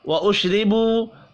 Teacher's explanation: را کو باریک پڑھنا ہے زیر کی وجہ سے، واو مدہ کو ایک الف کے برابر کھینچ کر پڑھنا ہے۔